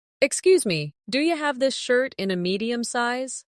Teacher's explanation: Listen to how do you becomes do ya in natural speech. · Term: connected sound